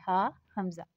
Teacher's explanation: हमजा हलक के नीचे वाले हिस्से से अदा होता है